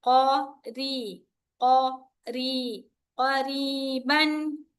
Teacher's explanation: ra should be light here, okay? Qaf heavy